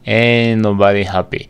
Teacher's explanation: Regla de las tres consonantes, no se pronuncia la T